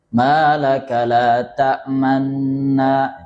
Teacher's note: Raum itu ya menunjukkan sekilas sepertiga dhammah atau dhammah yang lemah.